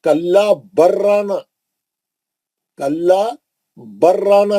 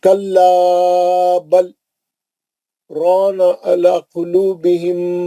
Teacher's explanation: لام نہیں پڑھ جاتا لام اور را کا مخرج قریب ہے لام ساکن کا را میں ادغام متقاربین ہو جاتا لام نہیں پڑھتے